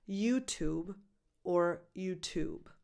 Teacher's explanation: Think of the name of this very famous band and add a very light B sound at the end, YouTube. The stress can be on either syllable